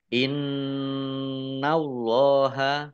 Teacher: Allahnya dibaca tebal karena harakat di depannya fathah · Nun tasdid dibaca ghunah atau mendengung ditahan dua harakat